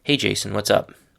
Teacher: you really need to say it with a neutral or even falling tone in your voice